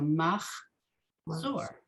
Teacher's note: Mahazor. So here, this is a shva under the chet that doesn't get sounded because it's the end of the first syllable